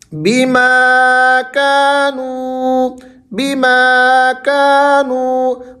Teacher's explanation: ماں کو بھی کھینچیں گے، کا کو بھی کھینچیں گے، نو کو بھی کھینچیں گے، کیونکہ ایک کے آگے الف مدہ ہے اور دو کے آگے الف مدہ ہے اور ایک کے آگے واو مدہ ہے۔